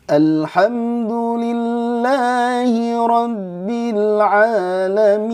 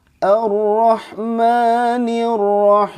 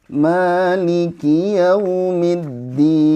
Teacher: Kan kita tuh ada nada naik datar turun nih.